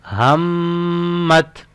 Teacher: मीम के ऊपर यहाँ पे गुन्ना करेंगे क्योंकि मीम मुशद्दद है